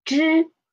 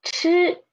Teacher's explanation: For 知, we use soft air. But for 吃, we use stronger air.